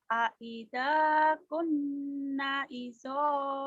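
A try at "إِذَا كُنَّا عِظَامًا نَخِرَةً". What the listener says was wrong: kunna panjang. Aida, aida kunna, aida kunna idhaman nakhirah.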